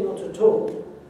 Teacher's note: Well, because if the T of the at was the end of the word, and not the end of the first word of two words, at and all, then it wouldn't be aspirated. But when we say not at all, we're aspirating that T. An aspirated T must be the beginning of a new sound.